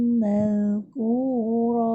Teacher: huruf zal dia adalah sifat rokhawah. Dia bukan sifat syiddah. Kalau kita baca mazkura, maksudnya kita telah menggugurkan sifat rokhawah dia.